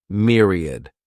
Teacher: This word has three syllables and the stress is on that first syllable. Mere sounds like mere.